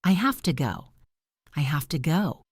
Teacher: The v sound turns into an f sound because it is next to the t. It is just easier for the mouth to say it that way. · Do you hear how the have to changes to hafta?